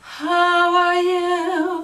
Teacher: the aspirated attack will bleed into the phrase like how are you and the whole voice the whole phrase will be breathy